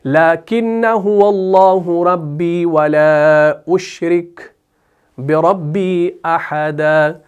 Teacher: لاکنہ جو ہے اس کے آخر میں یہ جو الف ہے نا، اس کو بھی وصل کی صورت میں نہیں پڑھا جاتا